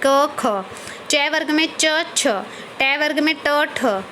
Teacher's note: अघोष व्यंजन, जिन व्यंजनों के उच्चारण में स्वर तंत्रियों में कंपन न हो तो वो अघोष व्यंजन कहलाते हैं।